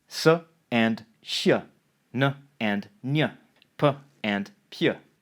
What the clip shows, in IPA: s - ɕ, n - ɲ, p - pʲ